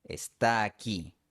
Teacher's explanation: Aún así, es común pronunciar una sola A. Puede ser una A larga, está aquí, o una A normal, está aquí.